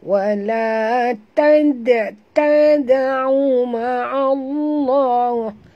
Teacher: Huruf dal bila dia mati di tengah-tengah kalimah begini, kita kena lantunkan dengan lantunan kecil. Hukumnya qalqalah sughra, ya.